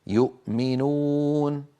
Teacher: الهمزه من اقصى الحلق والميم من الشفتين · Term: اظهار